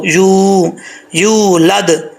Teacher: یا کے آگے واو ہے لمبا کر کے پڑھیں گے، یا پیش واو، یو، یولد.